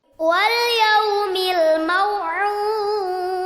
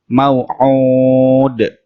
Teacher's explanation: Ainnya dibaca panjang 2 ayunan. Dan di akhir ayat dibaca qalqalah, artinya dipantulkan